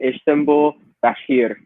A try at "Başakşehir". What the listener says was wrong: Başakşehir, right? Başakşehir. So you just ignore the AS and you just go Başakşehir?